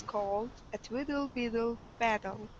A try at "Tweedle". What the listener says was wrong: And make sure that your t at the start of Tweedle is more pronounced. So when you say it, it sounds a bit like Tweedle. You want to make sure it's Tweedle. Yeah, Tweedle.